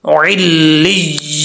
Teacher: जब वक्फ करेंगे नून साकिन हो जाएगा